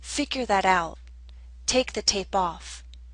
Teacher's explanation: while both the verb and the particle are stressed, the particle tends to receive slightly more stress